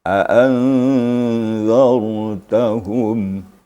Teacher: Kemudian ra sukun pada kalimat a'anzartahum. Dia ra sukun itu karena sebelumnya baris di atas atau fathah, maka ra-nya tafkhim.